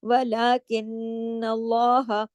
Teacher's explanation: ولا کن اللہ، کن، نون پہ تشدید ہے، یا غنہ ہوگا. اور پھر اللہ کا نام جو ہے زبر کی وجہ سے ہیوی ہوگا